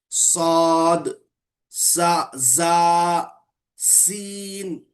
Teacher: इनकी अदाई के वक्त सीटी की सी आवाज निकलती है, यानी सीटी के जैसी आवाज निकलती है हरूफ सफीरा में।